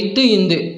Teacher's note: இத்து இந்து இவ்விரண்டெழுத்தும் நாவின் நுனி மேல்வாய்ப்பல்லின் அடிப்பகுதியை தொடுவதால் பிறக்கின்றன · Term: இணை எழுத்துக்கள்